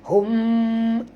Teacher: Ikhfa tu makna kita kena masukkan atau sembunyikan bunyi mim ini ke dalam ba disertai dengung 2 harakat. Sebab itu disebut ikhfa syafawi.